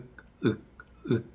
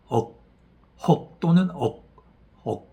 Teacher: H 차징 같은 경우는 발음이 K 발음은 윽 H 차징은 억 혹 또는 억 억 하다 보면 혀의 안쪽 뿌리가 올라가는 걸 확인할 수 있습니다.